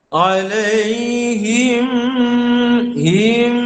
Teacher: rapat bibir mulut kemudian terus, jangan tekan, jangan buka, rapat saja kemudian teruskan dengan dengung, dua harakat.